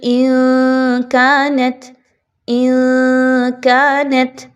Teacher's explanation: نون کی آواز کو چھپائیے ناک میں۔